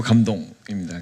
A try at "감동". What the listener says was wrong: 감동이죠. 발음 잘해주셔야 됩니다. 전 감독이라고 들어서.